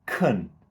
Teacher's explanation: we would actually unstress the syllable. Instead of can, kun. Yep, that's the schwa sound, kun.